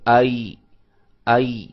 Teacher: آپ کی زبان کا درمیان والا حصہ جو ہے وہ اوپر تالو کو لگا ہوا ہے